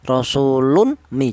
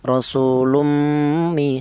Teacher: Jadi apabila ada tanwin berjumpa dengan huruf mim maka dibaca idgham bi gunnah, yaitu caranya tanwin ini langsung masuk ke huruf mim atau menyatu ke huruf mim